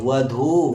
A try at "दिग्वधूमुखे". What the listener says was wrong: वधु उकार क्या है दीर्घ है वधूमुखे